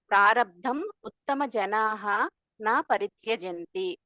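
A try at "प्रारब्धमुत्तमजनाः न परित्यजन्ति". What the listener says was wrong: ఈ చివరిలో ఈ మధ్యలో బ్రేక్ లేదు, ఇదంతా ఒకటే సెంటెన్స్, ఒకటే ఫ్రేజ్.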